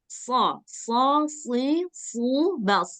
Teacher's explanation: dia kayak sa hanya saja dia lebih tebal